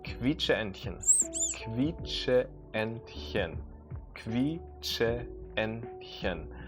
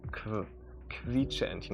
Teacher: the QU is actually more pronounced like a KV sound